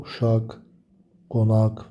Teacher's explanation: normalda uşaq, qonaq və sair sözlərdə sonunda tək yazılarsa uşaq x səsi verir